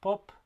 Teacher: we have an unaspirated stop at the beginning of the word